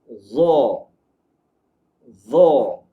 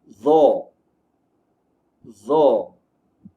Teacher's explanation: Huruf za disebut dengan menemukan hujung lidah kita dengan hujung gigi atas. Sebelum menyebut huruf za, pastikan lidah kita di hujungnya menyentuh di bahagian hujung gigi.